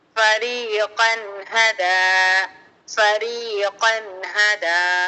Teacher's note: فریقا ہدا، فریقا ہدا، قاف کو را سے ملا کر پڑھیں گے، را کو پورا اور موٹا، کیونکہ را ساکن سے پہلے قاف پر زبر اس لیے را موٹا ہو رہا ہے۔ اور نون پر تنوین، تنوین کے بعد حروف ہلکی کا ہا آ رہا ہے، تو یہاں پر تنوین کی آواز کو ظاہر کر کے جلد پڑھیں گے، غنہ غنہ کچھ نہیں کرنا، بس ظاہر کر کے جلد پڑھنا، ہا کو میم سے ملانا۔